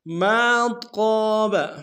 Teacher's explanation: میم کے ساتھ الف مدہ ہے، ایک اعتدال میں کھینچیں گے